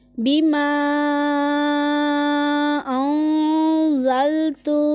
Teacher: زا حرف صفیریہ میں سے ہے، اسے سیٹی کی آواز کی طرح تیز پڑھیں گے